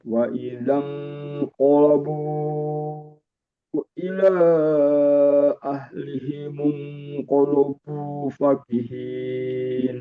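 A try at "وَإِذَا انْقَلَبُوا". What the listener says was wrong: Ini juga sama, la-nya jangan sampai ikut tebal. Wa idzan qala bukan qalabu, bukan. Wa idzan qalabu sama di depannya ila ahlihim qalabu.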